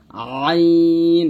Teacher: কণ্ঠনালীর মধ্যখান হইতে আওয়াজটাকে চাপাইয়া পড়তে হবে, আইন এরকম।